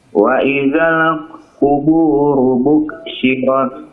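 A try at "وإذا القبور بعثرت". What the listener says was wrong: bu'thirat pakai tha. Bu'thirat.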